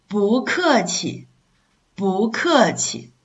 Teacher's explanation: Remain the original pronunciation, which is falling tone, 不. And then if it's in front of the fourth tone, syllable, you will have to change it to a rising tone to make the pronunciation more smooth.